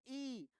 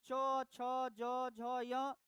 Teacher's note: ई, दीर्घ ई, चौ वर्ग यानी चौ, छ, ज, झ, य, ये सारे बोले जाते हैं तालु से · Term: तालव्य